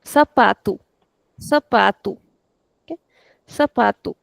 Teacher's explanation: The stress will never be on the last one. Never on the last one. It is always the second last.